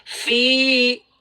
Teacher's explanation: Oke, fa-nya berharokat baris bawah berjumpa dengan ya sukun, ya. Maka fa-nya dibaca dengan kadar panjang 2 harokat. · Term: mad asli